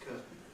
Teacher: I was saying it with a T nasally released into the end, curtain. But increasingly, people nowadays pronounce it curtain, curtain, curtain, curtain, with a glottal stop.